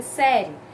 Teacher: Esse E que no final praticamente não é pronunciado, fica série. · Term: semivogal